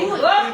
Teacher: The lips here are rounded, but this one is tightly rounded and it is prolonged, the long ooh.